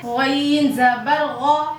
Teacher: غین بھی حروف مستعلیہ میں سے ہے، موٹا کر کے پڑھیں گے